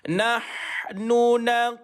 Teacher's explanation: dibaca dengan duduknya di tengah-tengah kerongkong bagi huruf ha pedas